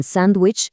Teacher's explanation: en sándwich casi nadie pronuncia la D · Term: elición, elisión